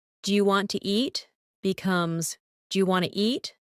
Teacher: The sounds blend. Sometimes letters are dropped like the T in want to. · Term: connected speech